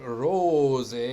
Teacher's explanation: why is this s pronounced z because it's in between two vowels